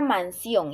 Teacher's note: La palabra mansión es una palabra aguda y también lleva tilde. Esta palabra lleva su mayor fuerza de voz en la sílaba ción. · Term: sílaba tónica